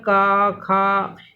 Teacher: कंठ से, गले से आवाज़ आती है इनमें, इसलिए इन वर्णों को कंठ कहा जाता है। जब आ बोलो, आ बोलो तो बड़ा, तो अंदर से आवाज़ आ रही, गले से आ रही है, इसीलिए इसको कंठ बोला जाता है।